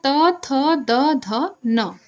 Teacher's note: दंत ध्वनि वह ध्वनि होती है जिसका उच्चारण क्या होता है दांतों के सहार से होता है